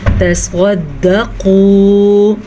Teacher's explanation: قاف کو پر پڑھیں گے، قاف بھی ہمیشہ پر پڑھا جاتا ہے. تصد، اس ٹائپ سے پڑھا جاتا ہے، شد والا حرف.